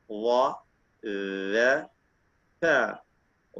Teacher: വാ എന്നൊന്നും പറയേണ്ട. طرف اللسان مع أطراف الثنايا العليا, നാവിന്റെ അറ്റവും മേലെ മുൻപല്ലിന്റെ അറ്റവും